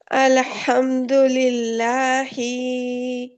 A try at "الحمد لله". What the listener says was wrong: جی ہی کو بالکل اور لائٹ کر دیجیے. اچھا عین کو بہتر کریں گے ٹھیک ہے.